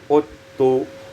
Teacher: Pada ayat 27 udtu idgham zal fitta menjadi uttu